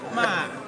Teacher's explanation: like you're running out of breath, falling tone